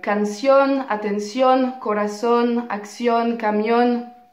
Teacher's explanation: un mot bien savant qui veut dire tout simplement que l'accent tonique est placé sur la dernière syllabe du mot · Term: palabras agudas